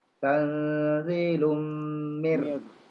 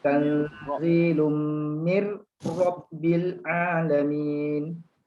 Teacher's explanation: Masa mir dia nipis, masa dia nak rob dia tebal balik.